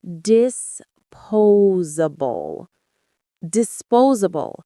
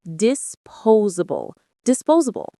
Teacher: The stress is on the second syllable, po, and that S in the middle has a Z sound